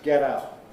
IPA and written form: ˈget̬ ˈaʊʔ (get out)